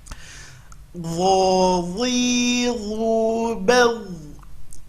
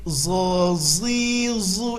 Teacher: Huruf dho sama makhraj dengan huruf dha, keluarkan ujung lidah, tapi ini huruf tebal, ya, huruf tebal.